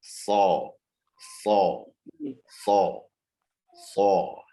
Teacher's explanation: Dia itu huruf sin, tapi lidah belakangnya itu dinaikin dikit.